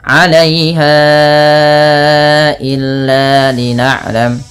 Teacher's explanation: Panjangkan bunyi ha yang ditandai dengan tanda pedang kecil seperti ini dan warna pink bertemu dengan hamzah setelahnya. Maka ini wajib dipanjangkan empat harakat pada lafal bunyi ha atau lima harakat karena ia ada hukum tajwid berupa mad jaiz munfasil.